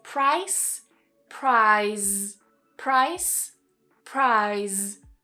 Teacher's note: Make sure you get that z that voicing at the end.